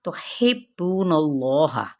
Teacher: ہا کی زیر کو با کے ساتھ ملائیں گے دباتے ہوئے